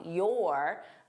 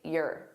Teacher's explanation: Your and the sound is unstressed. It's more in my throat.